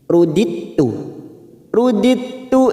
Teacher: ada huruf Dal sukun yang bertemu dengan ta yang bertasdid di sini sifat qalqalanya hilang namanya bacaan idgam mutajanisain rudittu rudittu Ila Rabbi la Alif kecil